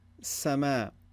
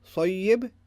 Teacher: there's a more high pitched sound and it's more lighter versus the heavy sod